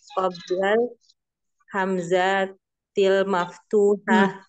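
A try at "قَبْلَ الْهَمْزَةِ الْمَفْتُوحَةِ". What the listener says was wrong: ya jangan dipanjang hamzatil jangan dipanjangkan qabl al hamzatil qabla alhamdatil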